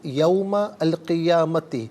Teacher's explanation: میم پر زبر ہے، اس سے القیامتی کی لام ساکن کے ساتھ ملائیں گے، درمیان میں سے الف حمزہ کو حذف کیا جائے گا